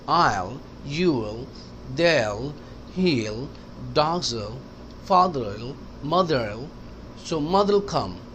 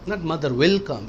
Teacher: पता है विल जब भी स्पोकन इंग्लिश में आएगा तो कनेक्ट हो जाता है। विल अलहदा नहीं कहते।